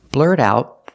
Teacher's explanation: The T in out is a stop T because the next sound is a consonant.